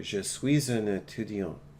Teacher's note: Now, if I'm going to say that all together, je suis un étudiant, the S runs into the U